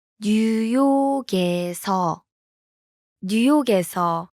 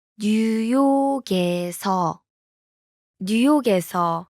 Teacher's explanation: Notice the difference? The last consonant in 뉴욕, blends with the vowel in. 에서.